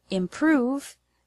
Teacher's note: The word improve has the stress on the second syllable, prove.